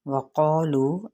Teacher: क़ाफ पुर है, वाव मद्दा लू पे जिनको एक अलिफ के बराबर खींचा जाएगा